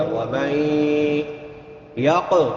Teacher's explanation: قاف موٹے حروف میں سے بھی ہے اور حروف قلقلہ میں سے بھی ہے، تو یہاں پہ قلقلہ کریں گے قاف پہ، یعنی اس کو ہلا کے پڑھیں گے۔